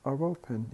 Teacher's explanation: We pronounce the re sound because the following word starts with a vowel.